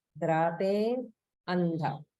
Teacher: So in this line, notice the slight gap after drape before andha